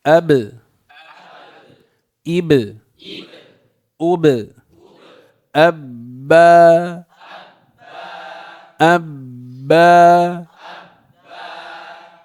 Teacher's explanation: والباء بانطباق الشفتين على بعضهما